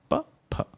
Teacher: It is pha. The Mahaprana variation of pa.